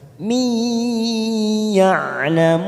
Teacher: mim kasroh tanwin bertemu dengan huruf ya warna merah namanya idgham bi gunnah. Kita tekan 3 ketuk. Mi ya'lamun ya'lamun lamun mad arid disukun 4 harokat kita panjangkan.